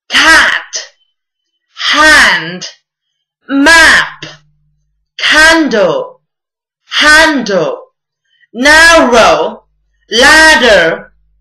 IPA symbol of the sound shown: æ